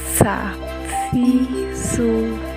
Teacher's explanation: Berikutnya perhatikan bagaimana melafalkan huruf sa, yaitu dengan cara menyentuhkannya ujung lidah dengan dinding gigi seri bagian atas. Kemudian diucapkan dengan mengalirkan suara dan nafas dengan lembut